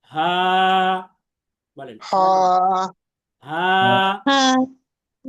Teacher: তাহলে এই হা হরফটি হচ্ছে হলক বা কণ্ঠনালীর শুরু হতে উচ্চারিত হয়।